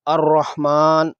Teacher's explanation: ہا چونکہ حرف قلقلہ نہیں ہے اس لیے خصوصی احتیاط کرتے ہوئے اسے ہلانا نہیں ہے، یعنی الرح نہیں پڑھنا بلکہ بغیر ہلائے الرحمن پڑھنا ہے۔ ہا کا مخرج درمیان حلق ہے، اس کی آواز ایسے ہوتی ہے جیسے سانس پھولنے کے دوران ہا نکلتی ہے۔ اس کو گول ہا اور حرف خا جس کے اوپر نقطہ ہوتا ہے سے جدا طرز پر ادا کرنا ضروری ہے۔